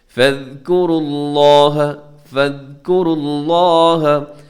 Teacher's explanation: لفظ اللہ کو موٹا رکھیے گا کیونکہ اس سے پہلے را کے اوپر پیش ہے